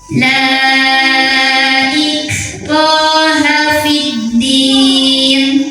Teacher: cara membunyikan ro yang baris fathah ini dipanjangkan dua harakat